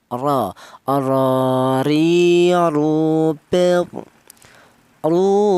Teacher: Huruf ro ini yaitu berasal di ujung lidah menyentuh langit-langit mulut